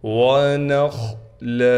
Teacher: نون کو خا سے ملانا ہے، خا کو موٹا پڑھیں گے